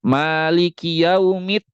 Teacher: ada beberapa orang yang membaca Maliki yaumiddin itu Dal pertamanya dibaca pakai ta jadi bunyinya kayak gini Maliki yaumit ada huruf t-nya dulu tuh